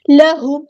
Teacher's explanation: لہم، ہاں سمپل پڑھیں گے، میم ساکن پر ٹائم نہیں دینا، اظہار شفوی ہو رہا ہے